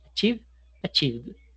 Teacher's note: Si tenemos el verbo achivos y tocamos la garganta en el último sonido, no solamente vamos a sentir vibración en la garganta, sino en los labios